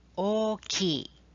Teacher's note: Let's emphasize the O to stretch the vowel.